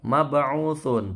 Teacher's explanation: ba-nya ini mantul kecil, qalqalah sughra